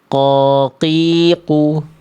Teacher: Qof makhrajnya tempat keluarnya dari pangkal lidah.